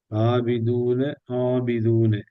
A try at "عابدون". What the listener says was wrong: ஆபிதூன, அதாவது நாக்கு அசைக்காம சொல்லுங்க. ஆபிதூன அலிஃப் அ ஆபிதூன. இப்ப நாவினோட இறுதி பகுதி தூக்குங்க. ஆபிதூன. ஆடு நீங்க ஐன ஐன உச்சரிக்கிறீங்க சரியா, ஆனா அது வானத்தை நோக்கி போகுது பிள்ளை இது. ஆபி ஆ ஆ ஆ என்று மேல் நோக்கி தூக்குறத பணிங்கோ. இப்போ இப்ப அலிஃபையும் ஐனையும் சரியா எடுத்து வந்து பார்ப்போம். போது தால கலக்கணும் கடைசியில் தால். மத்ததெல்லாம் சரி. போது தால கலக்கணும்.